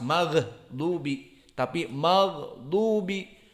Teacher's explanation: gha-nya yang ada suara, bukan nafas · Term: jahar